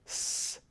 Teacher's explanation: the case of a uh an alveolar fricative that would be the top tip of the tongue against the alveolar ridge making something like s so you hear that high frequency noise